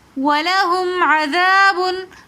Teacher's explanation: دال کے ساتھ الف مد آ رہا ہے تو اس لیے ہم نے الف مدہ کو ایک الف کی مقدار کھینچ کر پڑھا